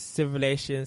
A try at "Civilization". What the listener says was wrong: You're missing the Z in your pronunciation of that, and it makes me giggle.